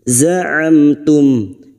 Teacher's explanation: mim sukun dibaca jelas tanpa mendengung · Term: idhar safawi